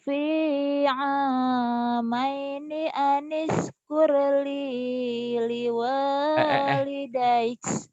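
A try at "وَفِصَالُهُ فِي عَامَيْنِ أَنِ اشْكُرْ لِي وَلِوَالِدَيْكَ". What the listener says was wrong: Aniskurli wali nggak ada li Kamu kebanyakan linya tadi ya.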